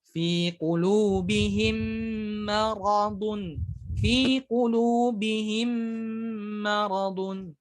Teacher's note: Maka kita baca dengan dengung ataupun langsung masuk ke mim yang selanjutnya disertai dengan dengung · Nah, ada idgham mutamathilain saghir, yaitu apabila mim sukun bertemu dengan huruf mim yang berharokat, maka wajib dimasukkan ke huruf mim yang kedua, disertai dengan dengung, ya, dengan ritme yang dipanjangkan, atau mudahnya ya ditahan dengungnya.